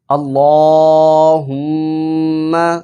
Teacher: اللہم کی لام کے اوپر کھڑا زبر ہے، اس لیے ہم نے اس کو لمبا کیا ہے۔ اللہم صلی علی صلی علی علی کی عین کو بھی نکالنا ہے اور لام کے اوپر کھڑا زبر اس کو بھی لمبا کرنا ہے۔